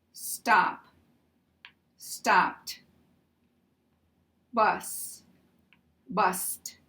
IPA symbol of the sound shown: t